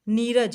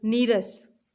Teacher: र हो तो विसर्ग लुप्त हो जाता है परंतु उसका पूर्व स्वर दीर्घ बन जाता है। जैसे देखिए, नी प्लस रज, नीरज, यानी कि वो क्या बन गया, उसका दीर्घ रूप बन गया, दीर्घ स्वर बन गया, नीरज।